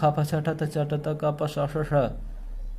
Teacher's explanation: खर प्रत्याहार में आने वाले वर्णों की क्या होती है? विवार, श्वास और अघोष प्रयत्न होता है।